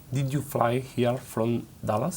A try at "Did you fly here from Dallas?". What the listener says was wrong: From. Cierra la boca. From Dallas? From Dallas?